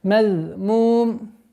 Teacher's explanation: Обратите внимание на межзубный даль.